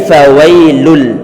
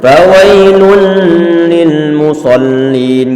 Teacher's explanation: tanwin bertemu dengan huruf lam maka dia adalah bacaan Idgham Bilaghunnah artinya itu kamu disini di bawah suara tanwinnya dimasukkan dalam huruf